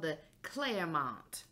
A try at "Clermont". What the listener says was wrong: It's multiple syllables. It's not just two.